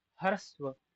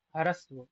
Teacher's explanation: हकार का उच्चारण पूरा नहीं है, क्यों इसका वर्ण विच्छेद करा जाए तो ऐसे पढ़ा जाएगा, क्योंकि सकार भी पूरा नहीं है, बस वकार आगे का पूरा है, तो इसको ऐसे पढ़ेंगे।